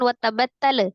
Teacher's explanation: lam sukun dialirkan ya, tidak dipantulkan